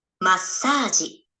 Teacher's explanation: Di depan sa kan? T kecil, su kecilnya datang di depan sa, jadi S-nya double.